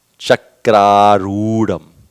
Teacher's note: that should be a long oo on arudham